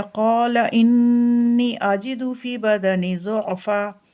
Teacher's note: انی اس پہ غنہ کرنا ہے، آواز کو ناک میں لے کے جانا ہے۔ نون کے اوپر جب بھی شد آئے تو ناک میں آواز کو لے کے جانا ہے۔